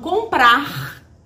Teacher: Gente, aqui no Rio tem uma dificuldade de fazer esse R no final. Então, vou puxar bem esse R lá do fundo. Certo? Para você perceber que tem esse R no final.